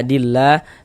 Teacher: Lafaz Allah dibaca panjang. Mad thobi'i panjangnya dua harakat.